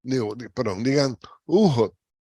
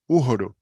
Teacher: la caída de la vocal alta y que la L y la R que quedan al final se pronuncian como T